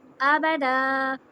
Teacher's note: الف کو بھی میں حمزہ کو بھی چھوٹا پڑھ رہی ہوں اور با کو بھی، اور دال کی حرکہ میں ذرا بڑی کر رہی ہوں 2 حرکہ جتنی، تو وہ فرق بھی پتہ چل رہا ہے۔